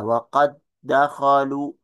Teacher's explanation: ketika diidgamkan seolah-olah dal yang pertama itu tidak tidak ada